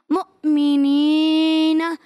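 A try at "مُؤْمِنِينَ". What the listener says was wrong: مؤمنین آخر میں نا میں جھٹکا نہیں دیں گے مؤمنین میم حمزہ پیش مو میم زیر می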